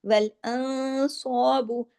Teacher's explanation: نون ساکن کے بعد صاد ہے، اخفا ہیوی سا ہوگا، اخفا حقیقی غنہ کاملہ